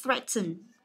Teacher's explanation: trọng âm của nó rơi vào âm thứ nhất